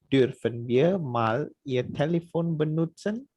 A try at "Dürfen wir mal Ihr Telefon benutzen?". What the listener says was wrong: Super.